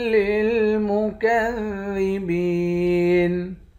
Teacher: با کو یا کے ساتھ ملا کر ایک الف کی مقدار کھینچیں گے